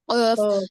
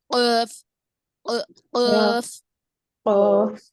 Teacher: تو زبان کا آخری حصہ اوپر کے ماقبل کے جو تالو ہے، قریب سے جو نرم والا تالو ہے، اس کو لگنے سے قاف ادا ہوگا. ٹھیک ہے، قریب کے جو نرم تالو ہے اس کو لگنے سے قاف ادا ہوگا